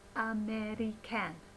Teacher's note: The stressed syllable here is mer, okay? But all the other syllables must be unstressed, and there are only the two unstressed sounds that we're allowed to use.